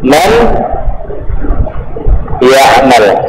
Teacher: Contoh ya, huruf yang pertamanya harus sukun, kemudian huruf yang keduanya berharakah. Diidghamkan nun ke dalam huruf ya.